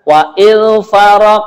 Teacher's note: qaf ketika sukun qolah memantul ya